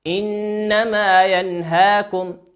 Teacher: إنما نون مشددة تغن بمقدار حركتين